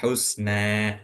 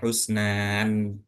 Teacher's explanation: Jadi bacanya bukan husnan bukan atau husn bukan juga tapi bacanya gimana cara bacanya husna. Jadi seakan-akan ee itu berharakat fathah dan dibaca dua harakat